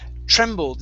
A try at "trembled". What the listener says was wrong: instead of trembled. ED ending. Trembled. Okay, ED instead of tremble. Trembled. Give me a D sound.